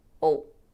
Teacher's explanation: It's really a schwa followed by a dark L.